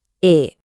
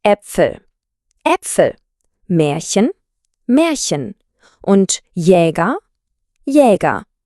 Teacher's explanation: Der Klang liegt so ein bisschen zwischen dem Deutschen A und E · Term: A Umlaut